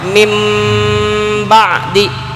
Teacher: Definisi iqlab itu harus menjaga gunnahnya, yaitu nun mati ketemu ba, nun atau tanwin ketemu huruf ba, maka harus dijaga gunnahnya.